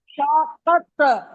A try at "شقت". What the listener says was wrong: شقت. پڑھیں شقت. ارے فا نہیں ہے، شف بولتی ہیں آپ، شقت ہے.